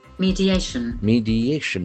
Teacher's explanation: There are four syllables and accent falls on the third syllable.